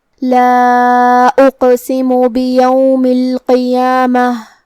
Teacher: مد جائز منفصل کا معنی ہے کہ حرف المد پہلے کلمہ کے آخری میں ہو اور اس کی وجہ جو کہ حمزہ ہے وہ دوسرے کلمہ کے شروعات میں آئے. مد جائز منفصل میں ہم اپنی آواز 4 مد کے برابر لمبی کریں